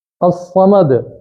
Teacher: دال پہ قلقلہ آ رہا ہے اور صاد پہ تفخیم ہو رہی ہے، موٹا حرف ہو رہا ہے